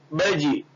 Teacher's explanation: یہ جیم کے اوپر جزم آیا تو پڑھتے وقت جیم کی آواز لوٹے گی, چپک نہیں جائے گی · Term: قلقلہ